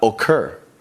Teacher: where the stress in the verb comes here we've got occur the stress is on the end of the word